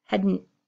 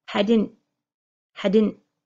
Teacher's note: My D and my T are both held in, they're not released. So you're not hearing a strong hadn't.